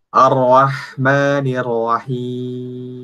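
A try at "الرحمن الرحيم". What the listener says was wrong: Jangan ar-Rahman. Lebih dibuka lagi. Jangan o. Jangan ar-Rah. Jadi yang tipis itu, yang tebal itu hanya ro. Sementara alifnya itu tipis. Jadi ar-Ro. Jangan ar-Ro. Jangan or-Ro. Tapi ar-Ro. Ar-Rahmanir-Rahim.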